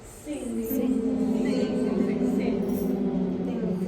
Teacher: right where the soft and the hard palate combine on like the word sing